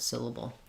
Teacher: So the syll is long and the able are short